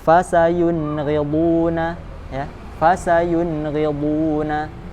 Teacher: Dibaca jelas sesuai makhraj tanpa tambahan dengung. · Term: izhar